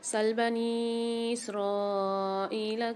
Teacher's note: سل بنی اسرائیل میں نون ساکن کے ساتھ یا مدہ اور مد آ رہا ہے، تو یہاں پر 3 سے 4 الف مقدار نون کو کھینچ کے پڑھیں گے۔ اسرائیلہ میں را کے ساتھ الف اور مد ہے، تو یہاں پر بھی ہم 5 سے 6 الف کی مقدار کھینچیں گے کیونکہ یہ بڑا مد ہے۔